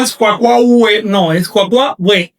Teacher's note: U más saltillo seguida de vocal se transforma en consonante más vocal. Es decir, en W más vocal.